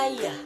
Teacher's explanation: berada di pusat dengan intonasi rendah dan bentuk mulut tidak bundar